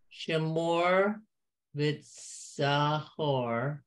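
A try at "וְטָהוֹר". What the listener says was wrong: Okay, remember that's a definite Z sound. Vitzahor.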